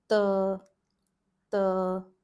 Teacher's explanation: the tip of the tongue is right on the teeth. It's touching the teeth when you're pronouncing it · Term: dental